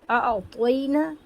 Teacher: اعطینا، طوی میں ای آواز آ رہی ہے، یہ معروف آواز ہے، اسی طرح پڑھنا چاہیے